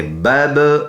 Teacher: با با زبر بب، قلقلہ کریں گے، آواز مڑ کے